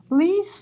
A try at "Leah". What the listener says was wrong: Leah. Leah. Okay, Leah. Two syllables.